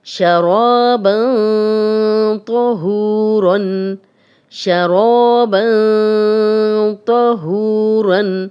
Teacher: من طیبات ینطقون، ینطقون، شرابا طہورا، شرابا طہورا، تنوین، تنوین کے بعد تو یہ اکفا کے رول میں سے ہے اور یہاں پہ ہم غنہ کر رہے ہیں لیکن ہم نون کی اور تنوین کی آواز کو تھوڑا سا چھپا کر رہے ہیں